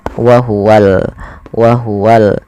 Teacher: Padahal kata al-haqqu di sini ada alif lam, yang dimana di sini kita namakan dengan alif lam, yaitu alif lam qamariyah. Maka alif lamnya harus dengan jelas dibaca lamnya